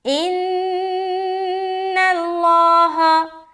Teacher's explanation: نون مشدد کا غنہ کرنا ہے اور نون کو باریک رکھنی ہے. جب لام سے ملائیں گے تب لام موٹا ہوگا اور ہا زبر ہا.